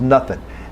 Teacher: We lose the NG quality, becomes nothing.